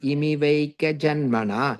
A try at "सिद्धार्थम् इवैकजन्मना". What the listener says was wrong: I think you're adding an extra me there. Ivaika janmana. And and the me becomes the im and the e there. Siddhartham Ivaika janmana.